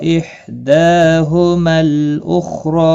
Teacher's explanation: मल लाम साकिन मीम लाम साकिन के साथ मिलाया जाएगा, यहाँ पर अलिफ मद्दा नहीं होगा